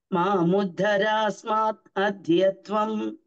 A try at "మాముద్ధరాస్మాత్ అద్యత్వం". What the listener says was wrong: మీ ఇద్దరు కూడా తా వినిపించేట్లా చెప్పడం లేదు. మాముద్ధరాస్మాత్ తత్ అద్యత్వం.